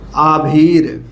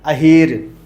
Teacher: दीर्घ स्वर का ह्रास ह्रस्व स्वर में होता है